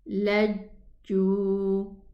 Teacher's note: This jim is pronounced from the middle part of the tongue against the upper palate.